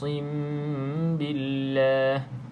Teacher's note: mim yang kosong ataupun mim mati ni bertemu dengan huruf ba Kita panggil dia ikhfa Ikhfa Syafawi jadi cara baca dia adalah sama macam iqlab sekiranya kita pilih